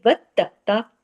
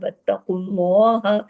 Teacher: ता के ऊपर तशदीद है, 2 मर्तबा पढ़ने में आएगा, सख्ती से जोड़कर पढ़ा जाएगा